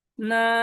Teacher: না, first টোনটা flat হয়ে যাবে